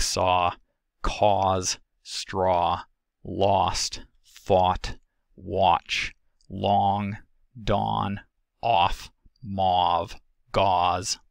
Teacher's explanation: It is the lower of the mid-back vowels. It is tense and rounded, found in my dialect anyway, in words like saw, cause, straw, lost, thought, watch, long, dawn, off, mauve, gauze. · Aw is articulated by lowering the jaw and retracting the tongue, as well as pursing and protruding the lips, with closure of the velopharyngeal port and phonation produced by the larynx. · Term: open O